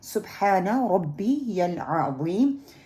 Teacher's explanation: سبحان با جو ہے وہ قلقلہ ہے، ہم صبح نہیں کریں گے، صبح سین کی جو پیش ہے اس کو ہم نے پھیلانا نہیں ہے، ہا کو ہا میں نہیں بدلنا، ڈیپ ہا، ٹھیک ہے، یہ مڈل پارٹ سے ہا نہیں ہے، ایری ہا ہوتی ہے۔